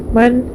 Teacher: نون ساکن کے بعد حروف حلقی میں سے حمزہ ہے تو نون کی آواز کو ظاہر کر کے بغیر غنہ کے جلد پڑھیں گے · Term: اظہار